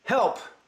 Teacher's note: It's called a plosive. And when you make the P sound, it shoots a lot of air in there.